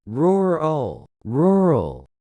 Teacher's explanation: The stress is on the first. The second syllable is very short and soft.